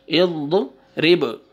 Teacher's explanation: با قلقلہ، حروف قلقلہ میں سے ہے تو یہاں پہ قلقلہ ہوئے گا، ڈبل ساؤنڈ آئے گا